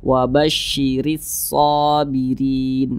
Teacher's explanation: kalau huruf ro dia berharakat kasrah maka dibaca tarkik Dibaca tipis